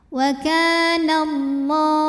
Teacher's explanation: dibunyikan secara tafkhim karena huruf sebelumnya berbaris fathah maka dibacanya tebal · alif lam menghadapi huruf Syamsiyah yaitu lam maka alif lam tidak kita baca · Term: alif lam syamsiyah